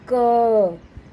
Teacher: क्योंकि इसको बोलते समय देखो लास्ट में अ की आवाज आती है ना ध्वनि आती है क देर तक बोलेंगे तो अ की ध्वनि आ रही है